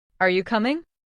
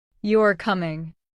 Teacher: The rising tone shows it's a question. The falling tone shows it's a statement.